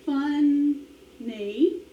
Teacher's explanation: So the accent is on the funny. It's on the first syllable.